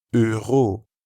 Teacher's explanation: In euro, notice how you can hear the same sound as in je and that French r sound that comes from the back of the throat